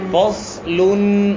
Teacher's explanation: صاد موٹا پڑھیں گے